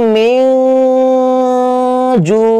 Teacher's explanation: যদি এসে যায় তাহলে সেটা কি হবে ইখফা হবে আর এইটাকে নাকের নরম জায়গায় নিয়ে এক আলিফ করে গুন্না করে পড়তে হবে